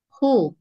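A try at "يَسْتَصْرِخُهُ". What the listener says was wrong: Khu. Nah, khu-nya hilang, Bu. Khu. Khokhihu coba.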